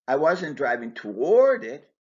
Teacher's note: Stressing toward emphasizes the direction of the action.